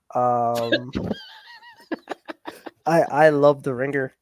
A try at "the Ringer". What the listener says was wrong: Why are you pronouncing it? Why are you pronouncing the G so precisely? Yeah, the Ringer. The Ringer.